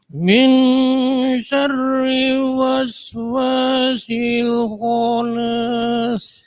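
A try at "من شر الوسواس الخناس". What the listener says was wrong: Min syarril, lamnya jangan sampai hilang. Min syarril waswasil khannas.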